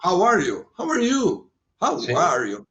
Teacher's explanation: Conforme você tem mais intimidade ou menos com a pessoa, você usa a palavra com vogal mais aberta, com ela um pouquinho mais fechada. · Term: Rising, Falling Intonation